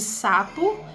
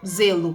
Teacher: Temos as que são consideradas dentais ou alveolares, que seria o s de sapo e z de zelo